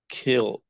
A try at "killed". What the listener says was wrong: With D. Give me emphasis in D. The idea is emphasis, guys. Yes, it is necessary.